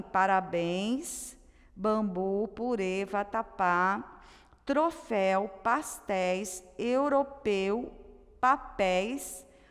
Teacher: palavrinhas oxítonas, sílaba tônica na última sílaba